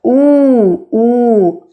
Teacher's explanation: Oo is similar to English oo, but it is stronger. We put our lips a bit forward.